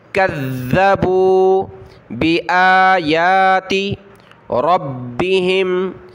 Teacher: کذبوا، کاف کو ذال کے ساتھ ملائیں گے، ذال پر زبان نکالیں اور اس کو سختی کے ساتھ پڑھیں، تشدید ہے